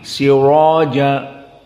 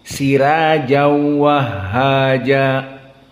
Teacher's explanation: wahaja Maka sirojan kalau jumhur dibaca dengan tafkhim siroja sirajja namun di sini diqiraah Wars menjadi tarqik karena sebelumnya kasrah